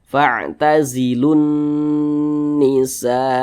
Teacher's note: mad wajib muttasil panjangnya 5 harakat empat hingga 5 harakat nah boleh empat harakat atau kira-kira empat ketukan 1 2 3 4 boleh lima harakat atau kira-kira lima ketukan